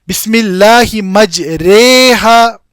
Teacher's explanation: را پر جو فتح ہے اس کو کسرہ کی جانب لے کر جائیں گے اور الف کو یا کی جانب. بسم اللہ مجریہا، بسم اللہ یہ مکمل فتح نہیں ہے. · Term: امالہ